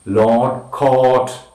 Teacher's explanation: back, between, half closed and half open, rounded and long sound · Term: long sound o